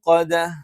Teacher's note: ദ നാവിന്റെ അറ്റം മേലെ മുൻപല്ലിന്റെ മുരട്ടിൽ വെച്ചുകൊണ്ടാണ്